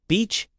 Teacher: Stretch that vowel in beach. Smile with your mouth.